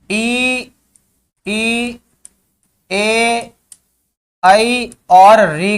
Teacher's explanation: इनका उच्चारण करते हैं तो जीभ का अग्रभाग सक्रिय रहता है। जीभ के अग्रभाग में हलचल या कंपन उत्पन्न होती है, इसलिए इनको अग्र स्वर कहते हैं।